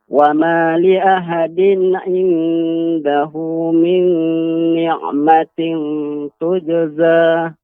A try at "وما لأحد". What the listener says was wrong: Ya, untuk huruf ha Bapak lebih dilembutkan lagi pengucapan huruf ha. Wa ma li ahadin, wa ma li ahadin.